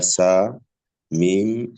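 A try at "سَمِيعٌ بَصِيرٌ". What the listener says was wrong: টান হয়ে যাচ্ছে, সামি।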